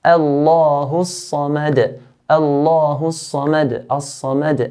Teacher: Dal here at the end, there's a qalqala.